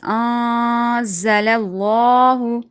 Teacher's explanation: After that, there's za from haruf ikhfa. So we're going to be hiding the sound of this noon into the nose.